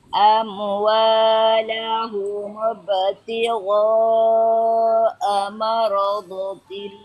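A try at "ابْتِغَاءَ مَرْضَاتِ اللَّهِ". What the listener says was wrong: Doanya 2 harokat. Jangan itu jangan pendek. Mardatillahi wa tathbita.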